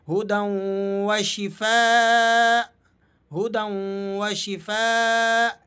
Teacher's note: اسی طرح یہاں دیکھیے گا آپ، اس لفظ پر حمزہ پر جو دو پیش کی تنوین ہے اسے ہم ساکن کر دیں گے، اسے ہم ڈراپ کر دیں گے اور اس حمزہ کو یہاں پیچھے والے حمزہ کے ساتھ ملا کر پڑھا جائے گا۔